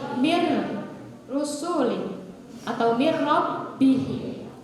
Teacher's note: Nun mati bertemu dengan ro. Masuknya ke dalam idgham apa? Bila gunnah.